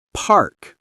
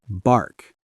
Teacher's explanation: P. Strong air push. Put your hand in front of your mouth. B. No strong air.